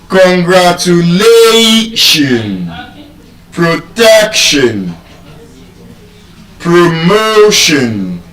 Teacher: You can see in all these examples that she has given us the stress is on the second to the last syllable.